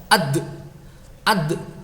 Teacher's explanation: Kemarin yaitu bunyi tambahan yang kuat setelah menekan makhraj ya. Jadi ketika mengucapkan huruf dal sukun, kita tekan makhrajnya, muncullah bunyi tambahan yang kuat yang disebut dengan sifat begitu itu disebut qalqalah.